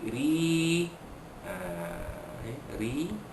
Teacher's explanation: ro baris bawah dibaca nipis, tarqiqa